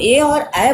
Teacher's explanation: जब हम ए और ऐ बोलते हैं तो हमारी जिह्वा कंठ और तालु को स्पर्श करती है, दो स्थान को स्पर्श करते हुए तब हम ए ऐ का उच्चारण करते हैं। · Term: कंठ तालु